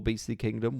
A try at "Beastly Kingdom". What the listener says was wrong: It sounds like you're saying Beasley is in like Pam Beasley. Like Pam Beasley Land, where she just does loads of artwork.